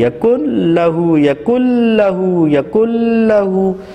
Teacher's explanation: نون کی کوئی آواز ہمیں ناک سے سنائی نہیں دے رہی، یکل لہو یکل لہو یکل لہو، ناک میں غنّے کی کوئی آواز باقی نہیں ہے۔ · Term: ادغام بلا غنّہ